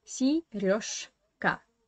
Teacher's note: this zh sound stands in front of k. That's why this zh should be pronounced as sh. Сережка. Yeah, not Сережка, but Сережка.